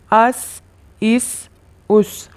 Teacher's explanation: آپ اس پکچر میں دیکھ سکتے ہیں دونوں دانت ایک دوسرے کے قریب آ رہے ہیں اور زبان کی نوک ان کے قریب جا رہی ہے، ان سے ٹکرانے کے قریب ہے